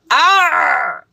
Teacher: হলকের মধ্যখান হইতে উচ্চারিত মানে গলার মধ্যখান